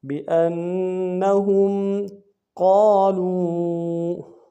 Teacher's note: قاف کو موٹا ادا کریں گے، قاف کے ساتھ الف مدہ ہے، ایک اعتدال میں کھینچیں گے